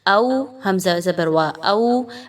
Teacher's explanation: او، او نہیں پڑھنا بلکہ او، ٹھیک ہے۔ واو پر جزم کا نشان ہے اور حمزہ پر زبر ہے، واو لین ہے یہاں پر، 1 سے 2 الف کے برابر اس کو پڑھنا ہے۔